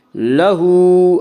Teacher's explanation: لہو، ہا کے اوپر الٹا پیش، الٹا پیش قائم مقام ہے، وا مدہ کس لیے الٹا پیش کو 1 الف کے برابر کھینچ کر پڑھیں گے